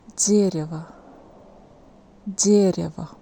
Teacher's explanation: Here first vowel is stressed and O isn't stressed, that's why we pronounce it more like A.